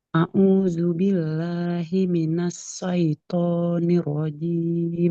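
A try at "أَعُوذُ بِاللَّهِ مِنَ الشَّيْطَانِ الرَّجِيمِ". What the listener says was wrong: Nah, huruf shin jangan huruf sin. Asyaiton. A'udzu billahi minasyaitonir rajim.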